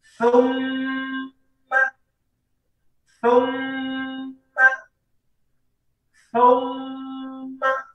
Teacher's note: Tidak boleh kita baca thumma, thumma, thumma, tapi harus kita berikan gunnahnya atau dengungnya · ketika huruf mim bertasydid, maka didengungkan dua harokat. Sekali lagi, ketika ada huruf mim yang dalam kondisi bertasydid, maka kita dengungkan dua harokat.